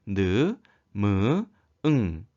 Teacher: 입 안의 통로를 막고 코로 공기를 내보내며 내는 소리입니다 그래서 코가 울려서 나는 소리가 되겠습니다 이코 소리에는 느 으 음 · 코 소리는 입 안의 통로를 막고 코로 공기를 내보내며 내는 소리입니다 그래서 코가 울려서 나는 소리가 되겠습니다